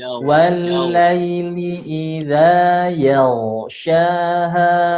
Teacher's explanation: huruf ghain sebelumnya fathah dibaca tebal